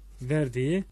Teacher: K yumuşak G'ye mi dönüşmüş? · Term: yumuşama